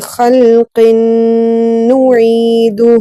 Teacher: غنہ ایک الف کے برابر ہوگا